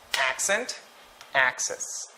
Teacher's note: the stress for accent and access, it falls on the first syllable.